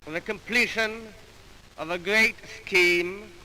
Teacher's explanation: pronouncing the R sound as a labiodental approximant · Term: rhotacism